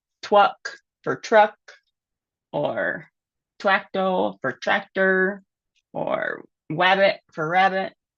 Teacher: W for R substitutions are pretty typical until 7 or 8